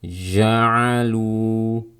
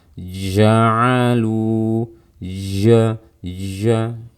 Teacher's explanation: sebelum saya melafalkan fathah pada huruf jim, ada suara jim yang mengalir terlebih dahulu, ada suara jim yang keluar terlebih dahulu. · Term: sifat rokhawah